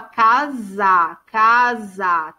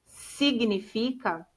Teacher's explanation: tem som de z não tem não tem som de s